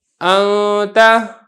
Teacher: نون کو پڑھنا تو ہے، غنہ بھی کرنا ہے، ساتھ ساتھ اس کو چھپا کر پڑھنا ہے، پتہ نہ چلے، صاف واضح بھی نہ ہو اور بالکل چھپ بھی نہ جائے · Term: اخفا